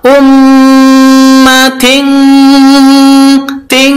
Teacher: Tanwin bertemu dengan qaf itu bacaan bacaan ikhfa. Bacaan ikhfa maka dibaca samar. Khusus huruf qaf dan kaf maka ditambah ng.